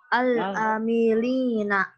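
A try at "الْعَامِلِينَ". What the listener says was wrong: Ainnya kurang panjang.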